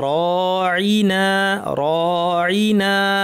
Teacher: র এর পর আলিফ আছে ভারী র হবে